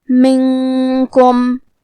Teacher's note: پھر حرف الکاف ہے. یہاں حکم ہے اخفاء تو ہم یہ حکم کو غنہ کے ساتھ ادا کریں گے